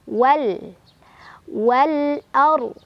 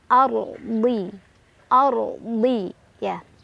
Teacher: ro-nya dibaca secara tafkhim karena ro sukun sebelumnya ada huruf berbaris fathah